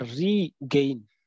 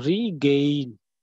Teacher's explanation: So here we are not actually stressing the first prefix, that is re. We are stressing the second part of the word, that is gain.